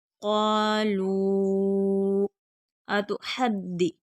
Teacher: हा हरूफ हल्की है, हलक से अदा होगा, दाल मुशद्दद है, सख्ती के साथ पढ़ेंगे।